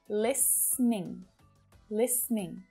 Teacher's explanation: native speakers will often reduce it down to just two syllables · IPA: / lis niɳ /, /ˈlɪs(ə)nɪŋ/